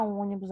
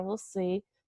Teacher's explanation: quando a gente pronuncia a sílaba tônica, a sílaba mais forte, aquela que está acentuada, a gente vai conseguir perceber que a gente fala com a nossa boca mais fechada